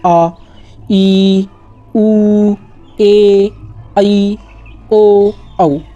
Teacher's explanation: इन्हें थोड़ा ज़्यादा खींचेंगे ह्रस्व स्वर से बोलते वक्त